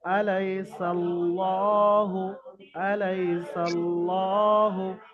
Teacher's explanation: আলাইসাল্লাহু, আলাইসাল্লাহু, কেউ যদি আলাইসাল্লাহ বলে তো কি ওটা বারিক হয়ে যাবে, কিন্তু বারিক এখানে হবে না, এটা পুর করে পড়তে হবে, কায়দা অনুসারে এখানে পুর হবে। আল্লাহ শব্দের লাম মুসাদ্দাদের পূর্বে যদি কি জাবার হয় কিংবা পেশ হয়, এখানে কি সিনের উপরে জাবার এসে, তো আল্লাহ শব্দকে পুর অর্থাৎ ল করে পড়তে হবে